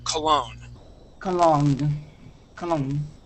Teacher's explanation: So just like hotel, the accent goes at the end of the word.